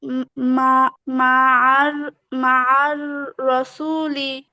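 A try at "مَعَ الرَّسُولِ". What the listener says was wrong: মাশাআল্লাহ।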